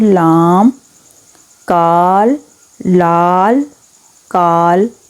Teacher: آگے جی، پہلوی مصمتیں کسے کہتے ہیں؟ وہ آواز جس کی ادائیگی میں زبان تالو سے لگے لیکن زبان کے ایک طرف یا دونوں طرف تھوڑا سا راستہ کھلا رہے